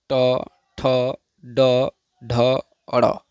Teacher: ट वर्ग, र और मूर्धन्य स का उच्चारण स्थान मूर्धा। मूर्धा मतलब मुख, अतः इन्हें मूर्धन्य वर्ण भी कहा जाता है।